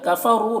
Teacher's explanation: را کو پر پڑھیں گے، یہاں پر واو مدہ ہے، ایک الف کے برابر کھینچیں گے۔